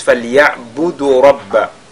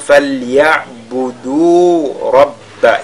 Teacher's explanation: ya'budu, on essaie de prolonger parce qu'il y a un waw al-mad. Très souvent, les gens lisent fal ya'budu rabba.